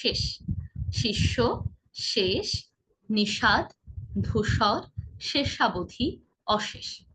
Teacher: আমরা জেনেছিলাম যে মাঝে মাঝে ভিন্ন উচ্চারণ হয়, চেহারা ভিন্ন হলেও, বর্ণ ভিন্ন হলেও তিনটি শ-এর উচ্চারণ বেশিরভাগ সময় একই রকম হয়। সেটা হলো ইংরেজি এস এইচ এর মতো, অর্থাৎ খানিকটা শীষের মতো। এরকম শীষ দিলে যেমন আওয়াজ হয় না, অনেকটা তেমন হবে। · শেষ শব্দটিতে তালব্য শ আছে, আবার মূর্ধন্য শ আছে, কিন্তু দুটির উচ্চারণ আমরা একইভাবে করছি।